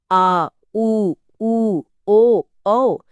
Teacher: आ, उ, उ, ओ, औ, यह सब पश्च स्वर हैं। इन्हें बोलते समय जीभ का पिछला हिस्सा सिकुड़ता है। आ, हां। आवाज सीधे गले की गहराई से आ रही है।